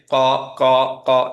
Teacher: back of the টাংটা একটু উঁচু থাকে